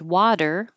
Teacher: You have your voice on, you leave it on, and the t changes to duh.